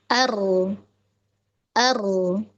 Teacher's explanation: rnya ketika disukun itu dia masih tetap ada aliran ya. Artinya dari segi suara dia tawas ya, masih ada aliran.